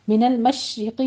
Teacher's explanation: شین کے اوپر تفشی کی آواز پیدا ہوگی را مرقق پڑی جائے گی